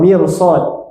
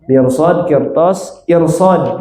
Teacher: Ro sukun sebelumnya kasrah bertemu dengan huruf tebal maka r-nya dibaca tebal.